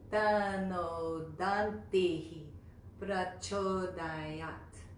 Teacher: There's 8 syllables. It almost sounds like there's 9 syllables in that, but it's just the pronunciation of the word dantih. There's a little bit of a ha at the end of that syllable.